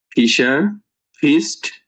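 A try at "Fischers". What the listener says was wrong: fishers, S আছে,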